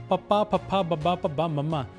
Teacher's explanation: ਸਾਡੇ ਬੁੱਲ ਆਪਸ ਚ ਜੁੜਦੇ ਨੇ ਇਸ ਕਰਕੇ ਇਸਨੂੰ ਦੋ ਹੋਠੀ ਧੁਨੀਆਂ ਕਿਹਾ ਜਾਂਦਾ ਇਸ ਤੋਂ ਇਲਾਵਾ ਯਰ ਵਾਲੀ ਲਾਈਨ ਅਤੇ ੳੇ ਅੜੇ ਵਾਲੀ ਲਾਈਨ ਦੋਵੇਂ ਇਹਨਾਂ ਧੁਨੀਆਂ ਦੇ ਅਨੁਸਾਰ ਹੀ ਬੋਲੀਆਂ ਜਾਂਦੀਆਂ ਨੇ।